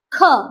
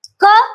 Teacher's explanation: ख म्हणून बघा हवा बाहेर पडते क च्या तुलनेत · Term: महाप्राण